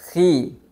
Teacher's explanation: di saat berharakat kasrah contohnya khi khi yang benarnya itu adalah khi dibaca tipis bahkan seolah-olah tidak terdengar lagi tebalnya khi dibaca seperti itu jangan dibaca menjadi tebal di saat huruf